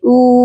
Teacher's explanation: یہاں پر حمزہ کو ایک الف کے برابر لمبا کریں گے کیونکہ اس کے ساتھ واو مدہ ہے